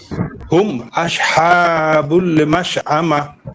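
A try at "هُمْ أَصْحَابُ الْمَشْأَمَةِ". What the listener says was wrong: এবারে একটু মনে হয় সিনের মতো শোনা গেল আবার। সিনের মতো শোনা যাবে। আস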